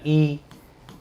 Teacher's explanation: अग्रभाग पे ई आगे वाले जीभ पे आ रहा है, ई, बड़ा ई, ठीक है।